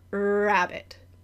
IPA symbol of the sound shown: r